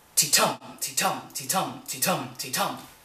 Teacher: The pattern is known as an iamb, and it's unstressed, stressed, or ti-tum, just like a heartbeat.